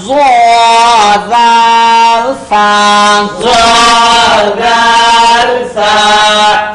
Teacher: জিহ্বার আগা, সামনের উপরের, সামনের উপরে, দুই দাঁতের আগার সঙ্গে লাগাইয়া, দুই দাঁতের আগার সঙ্গে লাগাইয়া, জাল সা।